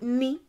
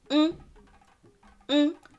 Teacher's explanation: instead of saying ni, what you would say if it was a consonant, you say ng, ng, because it has now become a vowel as well as a consonant